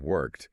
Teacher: So the E in the past tense goes entirely silent. You just attach D to the end.